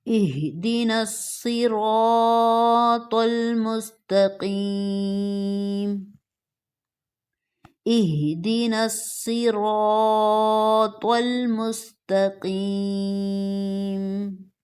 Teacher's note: صاد، را، طا تینوں بولڈ موٹے، اس کے بعد قاف موٹا